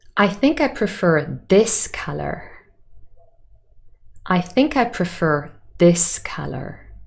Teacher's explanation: the meaning is i prefer this color not any of the other colors and this has contrastive stress in the sentence